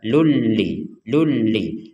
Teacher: Lun Li Lun li tapi karena kita menggunakan hukum tajwid maka tanwinnya ini dimasukkan kepada huruf lam jadi tidak lagi dibaca Lun li tapi dibaca lulli